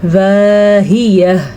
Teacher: میں نے پہلے بھی آپ کو بتایا ہے، آج پھر بتا دیتی ہوں کہ گول تا وقف کی صورت میں گول ہا بن جاتی ہے، تو وقف کرتے ہوئے ہا کی آواز ضرور آنی چاہیے